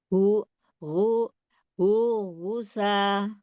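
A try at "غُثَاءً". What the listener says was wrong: Sa-nya pakai itu yang lidahnya keluar pakai huruf sa. Sa panjang ya. Gusaan ahwa. Coba sasisu. Nah, bedain tadi kalau Umi tadi baca lidahnya ujung lidah nggak keluar. Itu harusnya ujung lidahnya keluar ya huruf sa.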